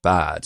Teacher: bad is getting even more open and going like bad. So almost like bod, like halfway to bod.